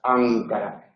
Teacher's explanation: Si la consonante es velar y decimos Ankara, capital de Turquía, entonces la lengua no toca los alveolos, sino que está hacia atrás, Ankara. Esos son alófonos de N.